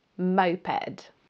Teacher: Remember to stress the first syllable.